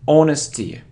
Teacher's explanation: It isn't honesty, it's honesty, so we don't pronounce H here